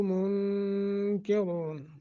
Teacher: نون ساکن کے بعد کاف حروف اخفا میں سے ہے، اخفا کریں گے